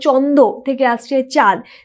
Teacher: কারণ এখানে যে ন অর্থাৎ যে নাসিক্য ব্যঞ্জন সেটা লোপ পাচ্ছে এবং আমাদের এখানে চন্দ্রবিন্দু উঠে আসছে, এবং যেহেতু এটা আকারই রয়েছে ফলে আগের যদি অ থাকতো তাহলে সেটা আকার হয়ে যেত।